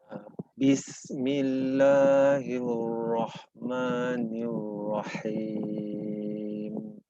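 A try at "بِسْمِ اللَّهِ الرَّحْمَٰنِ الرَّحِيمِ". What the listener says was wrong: Ya, rohnya agak tebal sedikit, tebalnya sedikit saja. Roh. Bismillahirrahmanirrahim.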